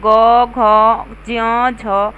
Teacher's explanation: इन व्यंजनों को बोलते समय स्वर तंत्रिकाओं में कंपन होता है इन व्यंजनों को बोलते समय श्वास के साथ नाद का भी प्रयोग किया जाता है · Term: सघोष